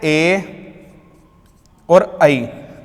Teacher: ए और आई का जो होता है वो कंठ और तालु होता है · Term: संयुक्त स्वर